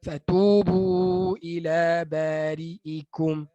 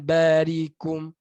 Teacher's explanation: huruf hamzah ni apabila dia berbaris bawah, dia mudah hilang pada sebutan. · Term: Hamzah hilang